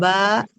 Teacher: Huruf ba merapatkan kedua bibir, huruf bibir.